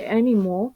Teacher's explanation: the nasal sounds N and M are reordered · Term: metas